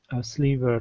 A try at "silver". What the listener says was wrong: Instead of sliver, this is silver.